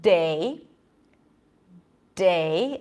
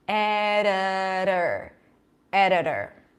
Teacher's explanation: I'm bringing the tongue up I'm holding my breath I'm allowing air pressure to build up and then I'm releasing it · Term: regular D